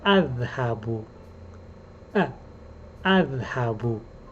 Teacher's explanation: The first letter, the glottal stop, this letter is called Hamza.